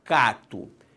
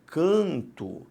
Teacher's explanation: o que aconteceu foi simplesmente a nasalização da vogal a